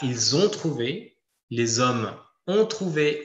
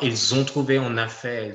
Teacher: quand le sujet est pronominale vous voyez à chaque fois que on a une liaison entre le verbe et le sujet